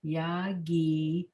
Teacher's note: emphasis is on that syllable, the gi syllable